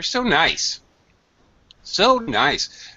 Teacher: maybe I don't drag so quite as much but I certainly use a high pitch